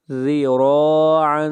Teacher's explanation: را کو موٹا پڑھیں گے، را کے اوپر زبر ہے